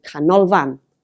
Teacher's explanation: three syllables the emphasis is on the middle one because of course it's the last syllable but one